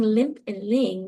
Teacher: you do have that nasal phonetic changing of the vowel slightly because of those nasal consonants being next to it